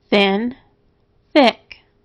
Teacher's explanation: th has two sounds this is its unvoiced sound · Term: unvoiced th